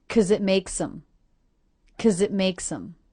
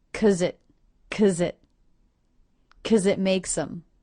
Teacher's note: The Z sound links to the next word, it.